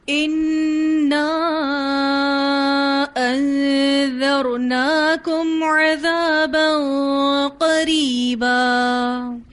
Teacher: قاف ادا ہوتا ہے اقصل لسان سے اور اس میں زبان اونچی اٹھ جاتی ہے. ٹھیک ہے، بس اس سے زیادہ نہیں، ہونٹوں کو گول نہیں کرنا ہے.